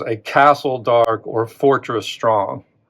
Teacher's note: Now, if you know anything about poetic meter, you can read for stress too. So the stress here is on that first syllable, castle. This is unstressed.